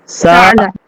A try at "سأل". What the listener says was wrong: سأل عین نہیں ہے وہ، حمزہ ہے وہ، عین نہیں ہے۔ پڑھو، نہیں پڑھنا۔